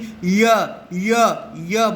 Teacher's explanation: ইয়া বলবার সময় জিভটা এই হার্ড প্যালেটের খুব কাছাকাছি পৌঁছে যাচ্ছে কিন্তু টাচ করছে না।